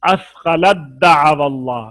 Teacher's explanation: تا کا دال میں ادغام ہوا ہے